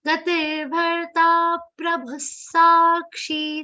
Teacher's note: complete the long sound of ta, then give a subtle aghat of pa